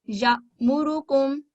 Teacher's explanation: हमजा साकिन को हल्के झटके से हलक के निचले हिस्सा से अदा किया जाता है